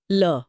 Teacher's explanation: ल बोलते समय हवा जीभ के बगल से यानी पार्श्व से निकलती है। इसलिए पार्श्विक है। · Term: पार्श्विक व्यंजन